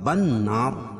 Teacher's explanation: نون مشدد اس میں غنہ ہوگا اور وقف کی صورت میں مد عارض وقفی ہوگا۔